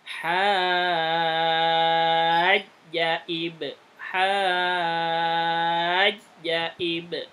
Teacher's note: Kepanjangan, ja-nya enggak panjang. Hajja ib, hajja ib, langsung gitu.